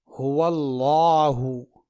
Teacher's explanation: لام کو پور یا موٹا پڑھنے کا مطلب یہ ہے کہ لام کی آواز گاڑھی اور موٹی نکلے گی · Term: موٹا لام